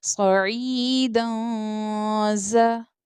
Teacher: زا اخفا لیٹر ہے اس لیے ہم یہاں پر اخفا کر کے پڑھیں گے، اٹ مینس غنہ کر کے پڑھیں گے